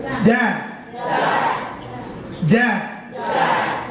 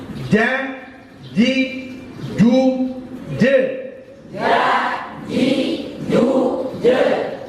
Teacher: Rasakan lidah pian itu tengah lidahnya menempel ke langit-langit. Rasakan lidahnya menempel ke langit-langit. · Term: huruf tengah lidah